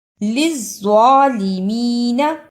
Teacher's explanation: للظالمین زوا کی جگہ پہ زا کی آواز نہیں آنی چاہیے